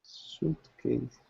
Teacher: S-U-I-T. The I is not really pronounced. So it's just an oo sound.